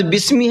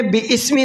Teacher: با سین زیر بس، با کو سین کے ساتھ میں ملانا ہے، اور یہ بیچ میں جو الف ہے یہ الف نہیں پڑھا جائے گا